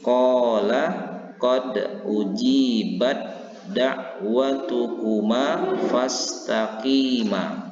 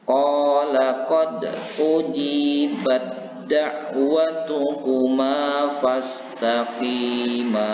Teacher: memasukkan huruf yang pertama, huruf ta yang berbaris sukun ini kepada huruf yang kedua yaitu huruf dal, dan membaca huruf dal ini seolah-olah bertasdid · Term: idgham mutajanisain